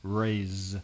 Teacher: You can put your hand on your throat with raise, and you can feel the zzz, Z, you can feel the vibration.